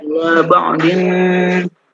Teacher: Itu ikhfa, ditahan 2 harokat